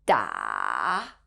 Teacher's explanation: The third tone, 三声, is a little trickier. It follows a checkmark sign by falling down first before going back up.